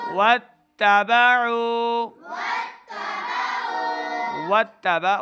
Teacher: تا کے اوپر زبر ہے، تا کی آواز کو لمبا نہیں کریں گے